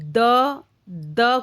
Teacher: द जब हम बोलते हैं तो द बोलने के लिए हमारी जो टंग है, हमारी जो जीभ है, उसे दांतों को स्पर्श करना पड़ता है, ऊपर के दांतों को। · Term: दंत्य